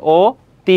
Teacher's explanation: অ এর উচ্চারণটা কি হয়ে যাবে? ও হয়ে যাবে।